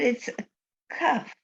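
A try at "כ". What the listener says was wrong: it's not a cuff. A cuff has a dot in it. So this way is a huff. Everything will say if it had a dot in there inside, it would be a cuff. Cuff. That's a hard sound. A K. Cuff. But right now, it's the guttural sound.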